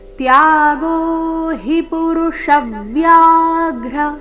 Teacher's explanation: ತ್ಯಾಗೋ ನಲ್ಲಿ ಎರಡು ಅಕ್ಷರ ದೀರ್ಘ ಮುಂದೆ ಹಿ ರಸ್ವ ಬರಬೇಕು ತ್ಯಾಗೋ ಹಿ ಪುರುಷವ್ಯಾಘ್ರ ಪುರುಷವ್ಯಾಘ್ರ ಆಘಾತಗಳ ಮೇಲೆ ಗಮನ ಪುರುಷವ್ಯಾಘ್ರ ತ್ರಿವಿಧ ಸಂಪ್ರಕೀರ್ತಿತಃ ತ್ರಿವಿಧ